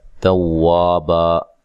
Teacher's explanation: واو کو ادا کرتے ہوئے ہونٹوں کو گول کرنا ہے